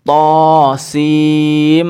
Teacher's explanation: Tapi karena ini jadi itu disukun semua, yang belakang diwakafkan sin. Nah, tapi dia tidak dibaca sin dengan akhiran n, akan tetapi dia dibaca dengan akhiran mim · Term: idgham dihunnah